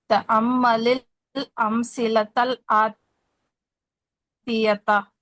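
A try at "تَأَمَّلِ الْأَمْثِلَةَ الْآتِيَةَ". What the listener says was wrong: तिल नहीं है, तल तल आती है। आपने तिल पढ़ा, तिल नहीं पढ़ना।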